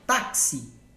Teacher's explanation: A palavra táxi, ela é forte no tá, por isso que ela é uma paroxítona